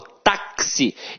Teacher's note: o X aqui tem som de KS. Ou seja, uma letra tem 2 sons. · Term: dífono